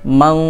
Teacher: যেহেতু তা ইকফার হরফ, তাই মিম নুন জাবার মান বলবো না, মাং বলবো। অর্থাৎ জিভটা নিচের দাঁতের গোড়ায় লাগিয়ে দেবেন, দিয়ে উচ্চারণ করবেন, দেখবেন গুন্না হয়ে যাবে